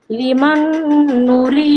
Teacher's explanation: ইয়া সাকিন ডান দিকে জের, ইয়া মাদ্দাকে এক আলিফ পরিমাণ টেনে পড়া